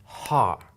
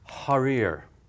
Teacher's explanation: This is an H, and just like an H sound, it's just air. It's not grating against anything. It's just pure air. Now it's a blast of air, but there's no to it, okay? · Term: hard or an aspirated H